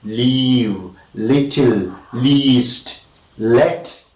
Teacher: Such lateral sounds are articulated with more fronting, and we can say that they are clear L. Comparatively, when you compare leave and fell, you understand that leave is more clearer, or rather more clear, or rather clearer okay, clearer than the l in fell, bell, or even tell.